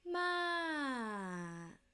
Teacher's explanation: falling tone high to low